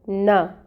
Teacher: نا، نون کے اوپر فتحہ کی حرکت ہے، 1 کاؤنٹ پڑھیں گے، اس نا کی حرکت کو لمبا نہیں کریں گے